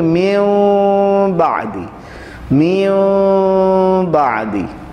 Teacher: ہم نون ساکن اور تنوین کی آواز کو بدل کر میم کی آواز سے پڑھیں گے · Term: اقلاب